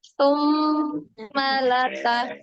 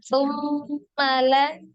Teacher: Coba dipendekkan summa yang panjang itu dengungnya ya. · Maknya jangan dipanjangkan. Jadi pendek. Yang dipanjangkan itu dengungnya.